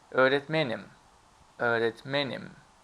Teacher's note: You see, men is stressed.